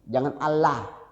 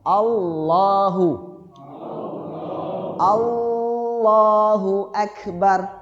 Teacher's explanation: Sambil ditebalin. Karena hukum bacaan Allah itu tafhim, tebal.